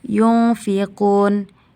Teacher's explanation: Pada ayat ketiga, bagian yunfiqun, hukumnya ikhfa hakiki karena nun sukun bertemu dengan fa dibaca samar dan dengung 2 harkat